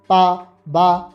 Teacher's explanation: इसमें दोनों होठों से हवा को रोका जाता है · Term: दो लबी